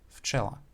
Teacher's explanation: at the beginning of the word, when it is followed by an unvoiced consonant, so when it would be assimilated, it will change to f, its pair